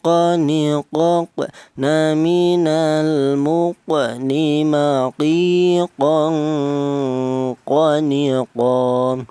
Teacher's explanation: Untuk huruf qaf ini keluarnya huruf berasal dari pangkal lidah. Pangkal lidah itu lidah bagian belakang, di mana pangkal lidah itu ditambah dua huruf, yaitu huruf qaf dan huruf kaf.